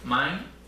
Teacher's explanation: Tenemos una vocal larga, en este caso un diptongo, mine, entonces viene subiendo ascendentemente la tonía, y al llegar a la N ya no me importa expresar el tono. Es decir, estas resonantes Lenis no son consonantes portadoras de tono.